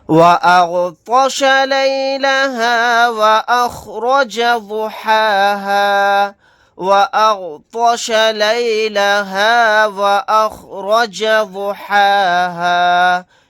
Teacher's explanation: یہاں پر غین کو اور طوا کو موٹا یعنی پر پڑھیں گے